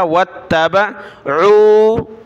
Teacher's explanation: واو کو تا کے ساتھ ملایا، تا کو سخت کیا